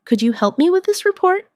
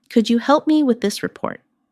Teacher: The words help and report carry more weight in the sentence. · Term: stress